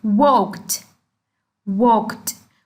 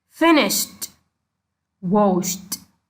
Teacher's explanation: The T sound like walked, walked. We pronounce ed here as a T sound